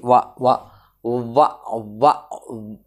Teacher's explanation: ready చేస్తే పై వరుస దంతము నీ కింద పెదవిని కొరికిందా లేదా చూడు దంతం వచ్చి పెదవిని కొరికింది దంతం వచ్చి ఓష్టం పై వాలింది దంతము ఓష్ట్యము ఇన్వాల్వ్ అయితే అక్షరం పలికావు కాబట్టి రెండింటి పేరు కలిపి పెట్టడమే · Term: దంత్యోష్ట్యము